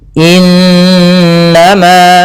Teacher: Ini bacaan ghunah. Cara membacanya suara n-nya ditahan dua harakat. Innama ah baru dilepas.